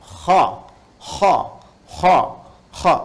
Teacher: Ini ketika kita ucapkan, itu bagian pangkal lidah di paling ujung itu menyentuh ke langit-langit. Sehingga ketika dia ke atas, suaranya lebih tebal. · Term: isti'la